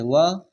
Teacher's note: किसके उच्चारण में निचला ओठ ऊपरी दांतों को स्पर्श करता है